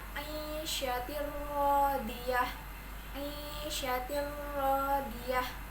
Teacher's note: Lalu pada ayat ketujuh terdapat hukum bacaan idgham bila guna karena huruf ta berharokat kasroh tanwin bertemu huruf ro tasydid, maka dibaca lebur tanpa dengung dan bunyi tanwin hilang